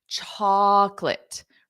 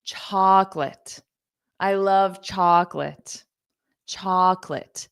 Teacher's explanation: It is not chalk-o-lot, okay? There's no O in the sound. It's two syllables, chocolate.